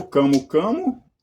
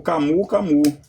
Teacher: pode ser aceitas as duas pronúncias, ou camu-camu, nasalizado, ou camu-camu também